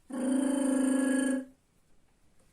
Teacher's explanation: це вібрація кінчика язика і повітря